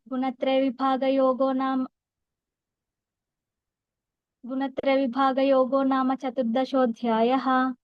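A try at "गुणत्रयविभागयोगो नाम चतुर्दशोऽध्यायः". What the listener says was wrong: రకారాలు ఒక్కటి కొంచెం చూసుకో అంతే. రకారాలు ఒక్కటి కొంచెం కొంచెం మిస్ అయినట్టున్నాయి అంతే. అదొక్కటి కొంచెం చూసుకో, మిగతా అన్ని బాగా బాగా చెప్పాం.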